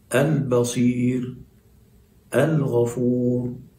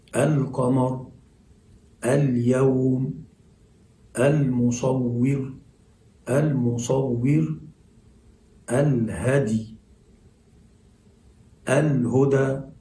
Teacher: تلاحظ أن اللام في كلمة القمر مظهرة، عشان كده بنقول نسمي هذه اللام المظهرة لام قمرية